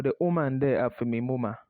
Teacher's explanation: That's the English form, but its corresponding word in Patois is de. So the th sound becomes de, a heavy D sound.